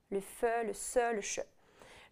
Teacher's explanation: les fricatifs, donc les sons qui soufflent